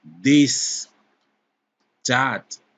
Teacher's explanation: Dental fricatives. The tip of the tongue against the teeth creates this fricative.